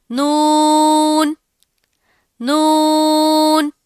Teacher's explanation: जुबान का किनारा ऊपर के 6 दांतों के मसूड़ों से लगेगा तो नून अदा होगा। नून की अदायगी में भी आवाज नाक में थोड़ी सी जाएगी क्योंकि इसमें गुन्ना की सिफ्त पाई जाती है।